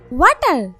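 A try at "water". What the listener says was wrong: জিহ্বার আগে সামনের দুই দাঁতের সাথে লাগবে। সিটেঙ্গা নাকি? তাই তো, ওয়াটার রে ওয়াডা বলতেই আছেন। আমি সিটেঙ্গাও বুঝি, ইংলিশে সিটাং মিশাইয়েন না।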